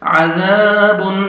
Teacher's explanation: ذال کو نرمی سے ادا کر کے 1 سیکنڈ کھینچنا ہے الف مد ہے